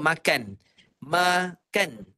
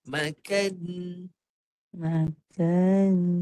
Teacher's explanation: bunyi nun, bukan bunyi N. Kalau N tak ada gunnah.